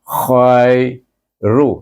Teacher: Hum justru izzah syafawi memati bertemu pula dengan kalimah khairu. Baik, kha bertemu dengan ya, dibaca dengan lin sebab sebelum ya baris di atas